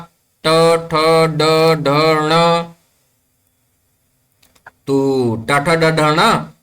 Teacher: मूर्धन्य ध्वनिः, मूर्धातः स्पर्शं कृत्वा आगच्छति।